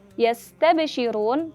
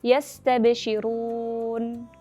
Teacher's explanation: Huruf nun bersukun pada akhir kata memiliki sifat bainiyah, maka ia lebih lama pengucapannya dibandingkan huruf ba bersukun dan yang bersifat syiddah. Dan juga huruf nun bersukun dibaca lebih singkat dibandingkan dengan huruf sin bersukun yang memiliki sifat rokhawah. Jadi yastabshirun, seperti itu.